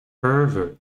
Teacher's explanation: we just change the stress to the first syllable